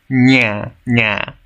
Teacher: La NJ es como una N con un sonido I simultáneo, como en cañón, pero más junto.